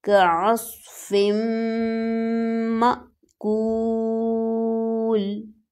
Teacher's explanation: الف پر جزم ہے تو اس کو حمزہ کہیں گے اور اس کو جھٹکا دے کر پڑھا جائے گا